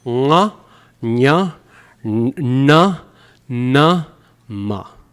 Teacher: this is moving systematically from the back of the throat, further forward, further forward, further forward, all the way to the outside with the lips · It's all the nasal sounds, and each one is pronounced in a different place in the mouth.